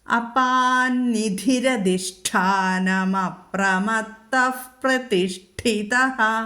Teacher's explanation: പ്രതിഷ്ഠിത വിസർഗം കഴിഞ്ഞിട്ട് പ്രതിഷ്ഠിത വരുന്നു, അവിടെ ഫ ചൊല്ലണം, ഉപധ്മാനീയം വരും